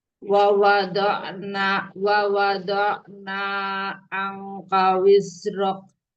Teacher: Alirkan sedikit ain, pada kata wada'na.